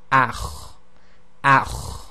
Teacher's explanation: So it's this sort of grinding sound, and it's effectively a continual exiting of the air, but you're constricting the windpipe at the same time